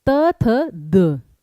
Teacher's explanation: द बोलते समय कानों में आवाज गूंजेगी, ये फैक्ट है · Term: गूंजने वाली आवाज